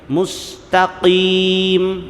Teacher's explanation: قاف موٹا قلقلے کے ساتھ ادا کریں،